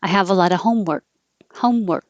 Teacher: end of the sentence i have a lot of homework homework my tongue goes to the k position and stays there